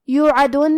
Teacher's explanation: کلمت یوعدون میں حرف العین کو ہم حلق کے درمیان والے حصے سے پڑھیں گے، آخر میں نون پہ رکیں گے تو اس پہ جزم سے رکیں گے لہذا ہمیں نون کو ظاہر کرنا ہے